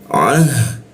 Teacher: Huruf ha mati itu harus ada ee porsi nafas berlebih ya